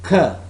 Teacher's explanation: the next class is velar soft palate and back of tongue